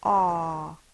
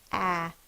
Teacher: the A is going to be pronounced aw, not the short ah sound